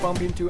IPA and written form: bʌmp ˈɪntu (bump into)